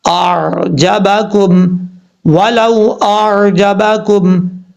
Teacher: لام کے بعد جو واو ہے اس واو کو لمبا نہیں کرنا، واو لین ہے